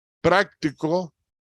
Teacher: la diferencia es que en práctico la sílaba tónica es la primera